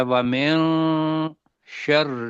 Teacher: وَمِن کے بعد شین آ رہا ہے تو من کو اخفا کرنا ہے ، پڑھنا ہے وَمِن شر النفا، دو حرکت کے برابر، سا،